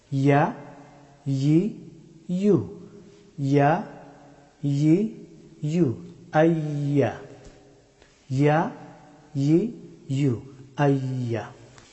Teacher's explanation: ইয়া হরফটি উচ্চারিত হয় জিহ্বার মধ্যস্থল এবং সোজা উপরের তালু।